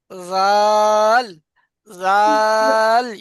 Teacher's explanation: জিভের আগা সামনের উপরে দুই দাঁতের আগা। জাল, জাল ইয়া জের জি, একদম হালকা উচ্চারণটা হবে।